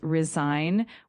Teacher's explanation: Make sure you pronounce it as resign with the emphasis on the second syllable.